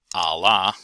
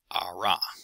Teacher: the primary difference acoustically between R and L is in the third formant F3 it's relatively high for the L and relatively low for the R